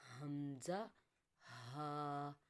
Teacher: حلق کے 3 حصے ہیں، حلق کا اوپر منہ والا حصہ، پھر حلق کا درمیان والا، اور سب سے آخر والا حلق کا نیچے والا حصہ جو سینے کی طرف ہے۔ وہاں سے ہمارا ادا ہوگا حمزہ ہا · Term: حروف حلقی